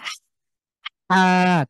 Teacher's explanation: কণ্ঠের মাঝখান থেকে, হলকের মাঝখান থেকে চাপ দিয়ে